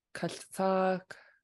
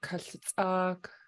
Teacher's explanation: a pinched S and then a high tone double A K